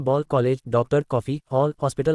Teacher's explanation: अंग्रेजी से हिंदी में आए जिन शब्दों में आधे ओ, आ एवं ओ के बीच की ध्वनि औ की ध्वनि का प्रयोग होता है